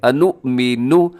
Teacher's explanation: انؤمن کو آپ نے جھٹکے کے ساتھ پڑھنا ہے کیونکہ یہاں پر حمزہ ہے